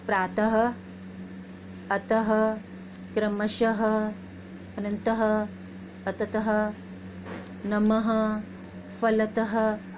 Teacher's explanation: हम इसको बोलते हैं तो बोलते समय ऐसा लगता है कि ह बोल रहे हैं, पीछे से हम ह का उच्चारण कर रहे हैं। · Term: विसर्ग